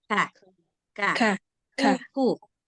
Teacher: Nah, jadi dia bukan kayak K bahasa Indonesia, kakak, enggak gitu. Ada sedikit anginnya. Lembut aja anginnya itu. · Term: huruf kaf